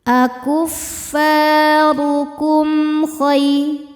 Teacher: Cara bacanya mim dibaca dengan idhar atau jelas. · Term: idhar syafawi